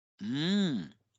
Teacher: at first it rises high and it drops to low, showing how the person felt after eating it. So it's his attitude or feelings that he has conveyed with this intonation. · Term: intonation for attitudes